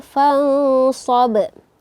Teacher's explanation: nun sukun bertemu dengan huruf shad, maka hukumnya yaitu ikhfa hakiki, didengungkan serta disamar-samarkan dengungannya